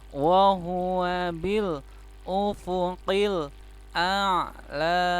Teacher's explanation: karena ainnya sukun maka dibaca a dulu kemudian ainnya di tenggorokan la nya panjang matobi'i ya.